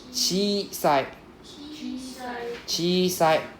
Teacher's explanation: So we drag out the I sound a bit longer.